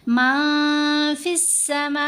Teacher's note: نون ساکن یا تنوین کے بعد، تو پھر ہم نے نون کی آواز کو ظاہر نہیں کرنا، نون کی آواز کو ناک میں چھپا کر پڑھنا ہے